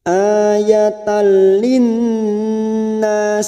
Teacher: Nun sukun atau tanwin, di sini ada tanwin yang bertemu dengan huruf lam, namanya bacaan idgham bila gunnah, hanya masuk tanpa mendengung. Jadi ini masuk pada huruf lam.